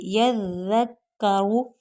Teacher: ज़ा जो है वो बारीक सीटी वाला हर्फ है, और ज़ाल जो है वो बग़ैर सीटी के।